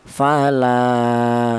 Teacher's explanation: Dimana untuk matobi itu panjangnya yaitu 1 alif atau 2 harokat atau 2 ketukan.